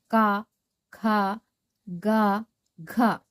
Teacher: ಕ ವರ್ಗದಲ್ಲಿ ಬರುವಂತಹ ಅಕ್ಷರಗಳನ್ನು ನಾವು ಕಂಠದಿಂದ ಹೇಳುತ್ತೇವೆ. ಇವುಗಳು ಕಂಠದಿಂದ ಉತ್ಪತ್ತಿಯಾಗುತ್ತವೆ. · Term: ಕಂಠ ಅಕ್ಷರಗಳು